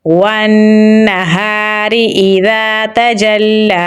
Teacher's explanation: تا کو باریک پڑھیں گے۔ جیم کو لام کے ساتھ ملائیں گے کیونکہ لام کے اوپر تشدید ہے، یہاں پر کھڑی زبر ہے تو اسے ہم لمبا پڑھیں گے